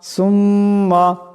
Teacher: মিম মুশাদ্দাদের পরিমাণ গুণ হবে